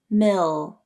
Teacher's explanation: hold out the dark L your tongue tip can come up to the roof of the mouth